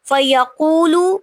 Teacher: فیقول یقو پہ واو مدہ ہو رہی ہے کیونکہ واو ساکن سے پہلے پیش آ رہی ہے